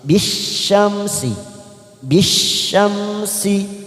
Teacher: mim sukun bertemu sin namanya idhar safawi, kita baca jelas tanpa mendengung